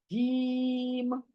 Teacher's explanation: जबान के बीच का हिस्सा, नोक नहीं, अलग का हिस्सा नहीं, बीच का हिस्सा जो मुंह के अंदर है, वो ऊपर, हमारे ऊपर तालू को लगेगा और जीम अदा होगा, यानी गोल होगा। जो हमारा जबान का बीच का हिस्सा है वो तालू की तरफ जरा गोलाई में आएगा, और फिर आप अदा करोगे जीम, करके देखो, जीम।